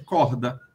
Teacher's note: É só aspiração, é o R que a gente diz aqui no Nordeste